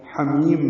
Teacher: حمیم میں ہا وسط حلق سے ادا کریں گے ، میم کو لمبا کریں گے وقفاً، یہ مد عارض للسکون